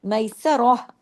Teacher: جس کی آواز سینے کی طرف جاتی ہے، گلے والا ہا نہیں